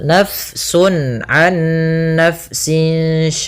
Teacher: di sini fnya dialirkan karena Fa memiliki Salah satu sifat yaitu sifat Hames yang di mana dia jaryanun nafas harus mengalir nafas kita di